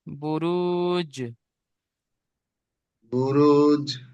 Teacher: এখানে তো কলকলা যেটা করেছে, জিমের উপর সাকিন এসেছে, জিম হুরুফে কলকলা। কলকলা তাই জিমকে কলকলা করে ডান দিকের অক্ষরের সাথে মিলিয়ে পড়তে হবে।